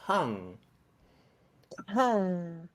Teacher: Use more aspiration at the beginning